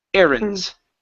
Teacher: the word is errands with the stress at the very beginning